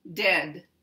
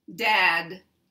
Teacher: the tongue is down touching the tooth in the lower part eh is directly above ah and your tongue moves up a little bit on your lower tooth